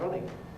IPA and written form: ˈrʌnɪn (running)